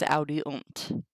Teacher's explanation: In the third person plural, U is inserted between the stem and the personal endings as audiunt. Note that the long vowel of the stem is shortened before the T.